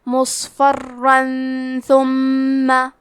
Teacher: ثاء حروف الاخفاء میں سے ہے تو ہم یہ حکم کو غنہ کے ساتھ ادا کریں گے